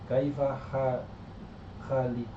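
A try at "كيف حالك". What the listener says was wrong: Enggak ada nya, itu huruf H bukan kho. Kaifa ha. Itu tidak ada haliku artinya apa? Kaifa halu. Kaifa haluk tuh ya. Kaif haluk. Kaif hal. Ya, kaif bukan keyep ya.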